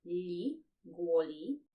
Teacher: Also, I think that officially this letter L is supposed to be pronounced as L. So it's a soft sound or a palatalized sound. It happens because the L is followed by I.